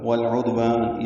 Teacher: والعدوان یہ بھی لام پڑھا جا رہا ہے اظہار قمری عین کی وجہ سے. دال ساکن پہ قلقلہ ہے، والف مدہ ہے، دو حرکات لمبا ہے.